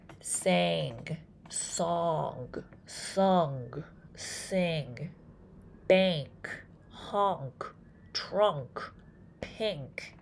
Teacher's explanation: you can definitely feel that there's something happening in your nose. It's fuzzy, it's vibrating.